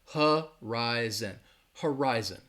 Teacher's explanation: That first syllable has that schwa, that huh